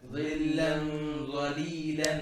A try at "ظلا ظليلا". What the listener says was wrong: You're making it flat. ظلا لألا ظليلا. You're not making it heavy enough, okay?